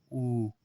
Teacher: जिन स्वरों के उच्चारण में ओठ गोलाकार हो, जैसे ऊ बोलोगे तो एकदम ओठ जो है आपका गोलाकार हो जाता है। मुंह में देखिएगा ओठ, ऊ बोल के देखो, ऊ, तो जब बोलोगे तो ओठ एकदम गोलाकार हो जाएगा। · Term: वृत मुखी, वृत्तमुखी